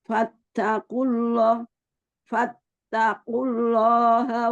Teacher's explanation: Fattaqullah itu kafnya tebal, kemudian lafuz jalalahnya juga tebal. Lam fathah la bukan lam fathah lo, ya.